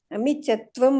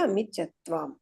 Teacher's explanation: ಅಮಿಚತ್ವಾಂ ದೀರ್ಘ ಇದೆ ತಾ, ಅಮಿಚತ್ವಂ ಅಲ್ಲ